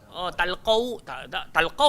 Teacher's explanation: Talqau kena muncung sebab lepas qaf ada waw. Memang dia kena muncung.